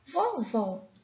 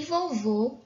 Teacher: vovó com acento agudo o som fica aberto e vovô acentuado com o acento circunflexo fica com som fechado